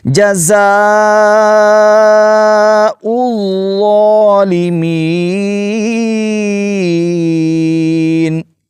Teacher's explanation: پہلے زا ادا کریں گے, سیٹی کی طرح آواز نکلے گی, اور پھر ظا جو ہے اس کو نرمی سے ادا کریں گے. یہاں پر سیٹی کی آواز نہیں آپ نکالیں گے, اگر اس کو آپ زا پڑھ لیں گے تو یہ بہت بڑی غلطی ہوگی.